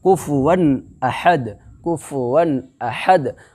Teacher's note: اظہار حلقی کو ظاہر کر کے بلا گنہ کے جلد پڑھو گے